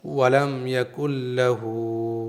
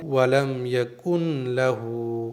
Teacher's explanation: بغیر غنے کے ادغام ہوگا، یعنی اس نون کو پڑھیں گے ہی نہیں، فل سائلنٹ کریں گے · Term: ادغام بلا غنہ